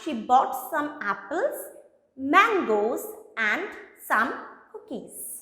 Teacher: i'm just keeping this graph like this from this to this in the first half i'm using rising and in the second half i'm just using the falling tone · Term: rising falling tone, rising, falling intonation